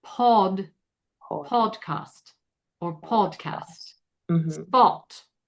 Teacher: Spot gets rounded to more of an AW. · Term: short O